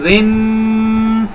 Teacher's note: دوسری رن دوسری کو رن نہیں کرنا کیونکہ را کے ساتھ زیر ہے. زیر کے ساتھ را باریک آواز کو پیدا کرے گی